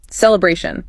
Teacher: Third syllable. Celebration. Feel that A sound lengthen a bit.